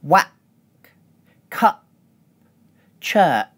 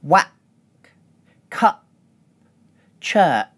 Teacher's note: We also use glottal reinforcement with the /k/ /p/ and /tʃ/ consonants.